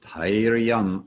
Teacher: the TH in Dhairam is a T sound and an H sound, as opposed to combining them as we do in English to make a th sound